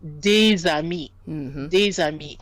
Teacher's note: we'll hear the S and it now sounds like a Z. It becomes des amis. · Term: liaison